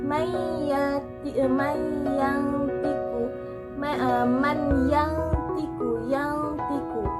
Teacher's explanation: Contohnya ketika nun mati bertemu dengan to, may yang tiku, nun mati bakal nunnya tetap bakal terbaca, tapi dibacanya pun nggak jelas, nggak terlalu jelas, tapi lebih samar-samar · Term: ikhfa